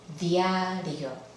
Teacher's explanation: Aquí se aprecia que la I y la A forman un solo sonido, el diptongo ya, diario.